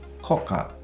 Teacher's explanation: pronounce it as koka, without the small tsu, without the gemination